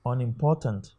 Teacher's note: this u n here okay is a prefix it cannot receive the stress